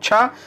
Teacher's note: च वर्ग में किससे होता है, तो तालु से होता है